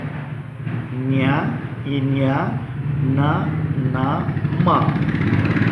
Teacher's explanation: ಮೂಗಿನ ಸಹಾಯದಿಂದ ಉಚ್ಚರಿಸಲಾಗುವಂಥ ವ್ಯಂಜನಾಕ್ಷರಗಳಿಗೆ ಅನುನಾಸಿಕಗಳು ಅಂತ ಕರಿತೀವಿ. ಇವು ಪ್ರತಿ ವರ್ಗದ ಕೊನೆಯ ಅಕ್ಷರ ಅಂದರೆ ಕವರ್ಗ, ಚವರ್ಗ, ಟವರ್ಗ, ತವರ್ಗ, ಪವರ್ಗಗಳಿದೆಯಲ್ಲ, ಈ ವರ್ಗದ ಕೊನೆಯ ಅಕ್ಷರಗಳನ್ನು ನಾವು ಅನುನಾಸಿಕಗಳು ಅಂತ ಕರಿತೀವಿ.